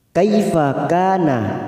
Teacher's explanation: sekarang di sini kita wasal maka kita langsung pada Kaifa Kana ka fathah diikuti Alif dua harakat kita panjangkan